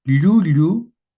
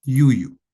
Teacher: La doble L con contacto de lengua con el paladar, yuya, y la ya de yuya, en la que no hay contacto con él, la parte media de la lengua no llega a chocar o no llega a estar en contacto.